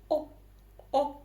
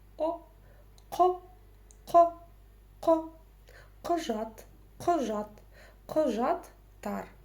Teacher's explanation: за основу нужно взять букву «О» обыкновенную, да. Просто эта буква «О» должна прочитаться очень коротко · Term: твердая гласная